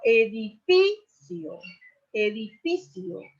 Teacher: la mayor fuerza de voz, el acento prosódico cae sobre la sílaba fi.